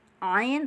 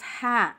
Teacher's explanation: ain dan H sama-sama di tengah-tengah tenggorokan, tapi ada bedanya